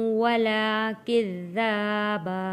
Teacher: وَكَأْسًا غنہ ادا کیا ہے، دِہَاقًا لا يسمعون فيها لغوا ولا كذابا، ذال کو نرمی کے ساتھ پڑھیں گے، ذال کے اوپر تشدید ہے، تشدید کو ہم نے 2 بار پڑھنا ہے، یعنی کہ ذال 2 بار پڑھا جاتا ہے، تھوڑا سختی کے ساتھ رک کر۔